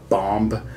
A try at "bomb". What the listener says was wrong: No, the B is silent. The final B is silent. It's bomb.